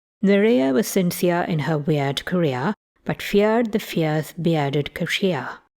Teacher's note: I realized I realized you can make the near diff thong almost the same as square with the tongue not quite making it to the kit position to start the glide